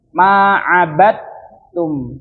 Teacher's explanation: Jadi qalqalah dalnya itu tidak terlihat, jadi langsung masuk ke taknya.